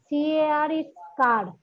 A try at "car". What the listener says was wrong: it's Ka. There is no R. When we say, I have a Ka. Yes, you check. You check the Google and Ka. The R is silent.